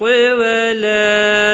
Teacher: ولا الف مدہ ہے، ایک الف کے برابر کھینچ کر پڑھیں گے